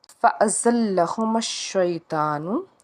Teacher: زا جو ہے حروف صفیریہ کا حرف ہے، سیٹی کی آواز آنی چاہیے، لام کو ہم 2 بار پڑھیں گے۔